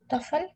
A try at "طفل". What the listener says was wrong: Tiflo, not tafel. Tifel. Kasra.